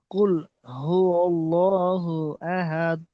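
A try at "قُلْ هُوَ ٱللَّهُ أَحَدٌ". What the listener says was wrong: আহাত কলকলা করেন, আহাত কলকলা। কুল হুয়াল্লাহু আহাদ।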